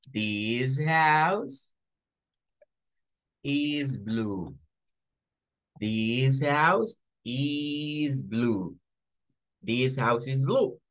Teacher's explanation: sonido para el ditongo en este caso adopto el sonido y una s silante o sin vibración al final